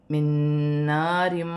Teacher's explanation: مشدد آ رہی ہے تو یہاں پر ادغام مال غنہ ہوگا، دو زیر کی تنوین میں غنہ بھی کیا جائے گا اور ملا کر بھی پڑھا جائے گا